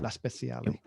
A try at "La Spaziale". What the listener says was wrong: No, La Spaziale. It's spatial. It's space, not special.